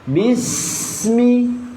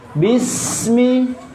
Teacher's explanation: Oke, hams. Berarti huruf sin ketika disukunkan bukan hanya nafas yang mengalir, tapi juga suara